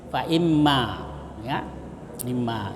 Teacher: Nah, disambung dengan ma, jadi nunnya hilang karena dia dimasukkan ke dalam mim, ya. Jadi nun berubah menjadi mim, fa imma, ya, imma. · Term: idgam nun